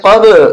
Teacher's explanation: یہاں قلقلہ ہوگا با کے اوپر، جھٹکا دیں گے ، قب، یعنی آواز ٹکرا کر آئے گی، قب، لام زیر